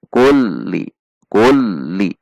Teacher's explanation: tinggi kemudian merendah seperti hendak berhenti kemudian naik kembali